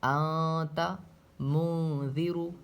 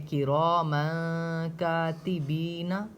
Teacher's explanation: تو نون کی آواز کو ناک میں چھپا کر پڑھتے ہیں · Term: اخفا